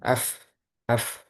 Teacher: Disitulah letak makhraj huruf fa. Ketika sukun af, ini terhentinya di ujung gigi seri atas menempel pada bibir bawah bagian dalam.